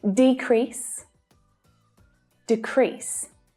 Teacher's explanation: As a noun, the stress is on the first syllable. As a verb, the stress is on the second syllable.